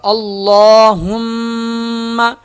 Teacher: لام پہ تشدید ہے، لام موٹا ہوگا اور ایک الف کے برابر کھینچا جائے گا، اور ہا میم آپس میں سختی کے ساتھ ملیں گے، میم پہ غنہ ہوگا۔